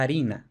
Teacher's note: lo normal es que en la edad media se escribiera también con efe pero que se pronunciara la harina con la aspiración · efe inicial latina se solía aspirar en la mayoría de las ocasiones